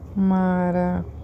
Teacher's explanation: Então, a que eu falo mais tempo é o já. Então, eu sei que essa é a minha sílaba tônica.